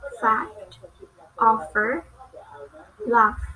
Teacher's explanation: Okay, next is English consonant F. It belongs to labiodental and fricative.